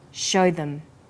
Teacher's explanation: also uses the words show them. Here, show is stressed and them is unstressed, so we say show them. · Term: vowel and consonant linking